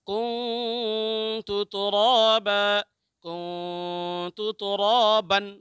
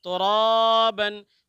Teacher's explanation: آگے دیکھیں: کنت ترابا، کنت ترابا، بن بھی پڑھ سکتے ہیں، با بھی پڑھ سکتے ہیں۔ رکنے کی حالت میں ترابا ہوگا، جب کنٹینیو کریں گے اگلی والی آیت سے تو ترابن ہوگا